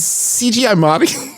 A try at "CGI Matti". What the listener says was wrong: No, it's better when you say it faster, honestly. CGI Matti.